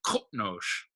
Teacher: Yeah, and that's sort of why oftentimes you'll see this, like, when transliterated into English, you'll often see capital Q's, what are capital Q sounds in Klingon as KR, because it almost sounds like there's an R in there.